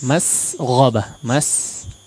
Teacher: Huruf sinnya diperjelas, itu agak tebal ya